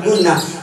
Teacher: Nun bertasdid, cara baca ditahan, rada dengung sedikit.